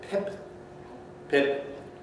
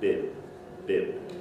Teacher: they have strong aspiration which is a little puff of air it's got from the fact that the lips are held less